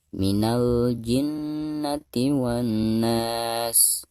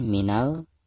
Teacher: Alif Lam Qomariah karena ada tanda sukun berarti lam tersebut harus dibaca ya dibaca jelas